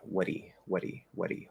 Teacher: my tongue is going to kind of come up it's going to tap and push so that's the flap there as you go into e